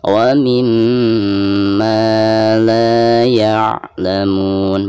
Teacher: Bacaan la dibaca 2 harokat dihukumi mad tabi'i.